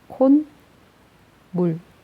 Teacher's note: 니은 소리가 첨가되지, 얘들아. 자, 니은 소리가 첨가돼서 사이소리 현상이 일어났네.